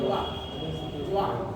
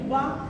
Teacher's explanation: वा का उच्चारण करते हैं तो होंठ नहीं मिलते हैं, बा का उच्चारण करते हैं दोनों ऊपर नीचे मतलब मिल जाते हैं